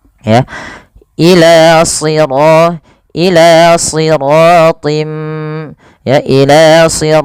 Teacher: masukkan bunyi tinnya kepada mim kemudian suara mnya ditahan